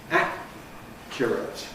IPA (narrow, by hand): ˈæʔkjərət